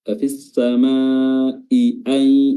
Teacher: 2 huruf hamzah harus ditahqiq dengan baik, dibaca i, diberikan haknya